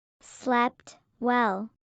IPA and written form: slɛp wɛl (slept well)